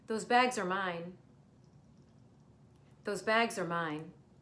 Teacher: are, her, and or all sound exactly the same. They take on the schwa and therefore have the same vowel sound